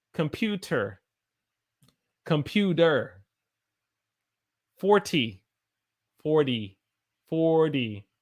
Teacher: when we have T's in the middle of a sentence, a lot of times we do not say the T sound, we say the D sound because the D sound is a lot easier for us to say.